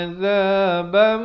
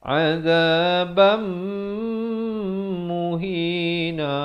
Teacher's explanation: Dengungkan di sini. Asalnya azaban, tapi bila datang mim jadi hukum masuk beserta dengung. Idgham bi gunnah, kadar panjang 2 harakat.